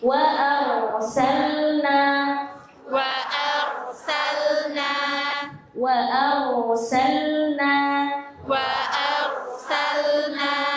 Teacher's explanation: Jadi nggak terlalu panjang seperti bis. Nah, kalau huruf ro dia bainiyah, itu sifat yang mana suaranya itu sedang-sedang, tidak terlalu panjang, tidak terlalu pendek.